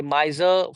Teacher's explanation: miser would be two syllables only there is no final r sound in British English